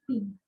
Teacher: पी में आपके lips चिपकेंगे और खुलेंगे